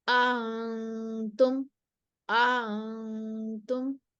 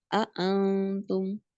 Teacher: इसमें आ को लंबा नहीं करना बस दूसरे हमजा में तस्हील दे देनी है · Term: तस्हील बिला इदखाल